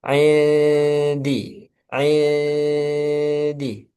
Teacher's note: fokus di ujung lidah ya di dal siap-siap ke huruf dal jangan ada suara di pangkal lidah